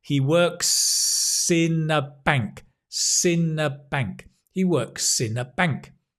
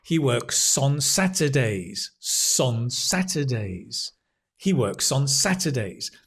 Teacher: if the next word begins with a vowel. We native speakers will often link it and that's where you notice the s.